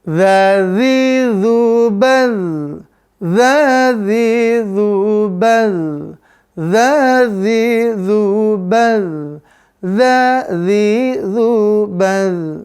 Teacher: Udaranya tertahan pemirsa. Maka dia jahar. Udaranya tertahan.